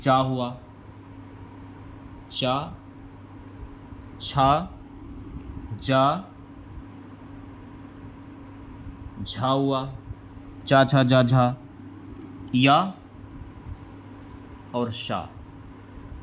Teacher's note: च छ ज झ हुआ च छ ज झ या और श ये आपके तालू से बोले जाने वाले वर्ण है